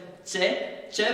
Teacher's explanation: हमारी जिह्वा धरातल से उठकर मसूड़ों के ठीक ऊपर जाती है तालू के पास, यहां से उच्चारण हो रहा है च का